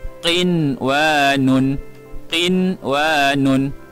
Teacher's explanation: Nun bertanda sukun, selepasnya huruf waw, tidak perlu didengungkan kerana nun mati pada satu kalimah yang berjumpa dengan huruf waw dinamakan izhar mutlaq.